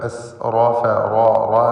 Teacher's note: മൻ അസ്റഫ ഈ പദത്തിൽ റാഇനെ പൂർണ്ണമായ തഫ്ഖീം ചെയ്ത് ഉച്ചരിക്കുക. എസ് റോഫ റോ റോ എന്ന് തടിപ്പിച്ചുകൊണ്ടുള്ള ശബ്ദം കൊടുക്കുക.